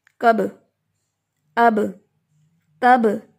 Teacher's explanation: مخرج میں ان حروف کے اوپر آواز ہل جاتی ہے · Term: قلقلہ